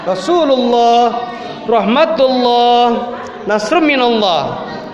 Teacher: Lafaz Allah berbaris dibaca tafhim tebal berbunyi Allah, berbunyi O.